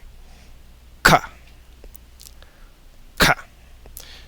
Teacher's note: move the back of your tongue against the back of the top of your mouth to make a complete closure and then breathe past it to explode open the closure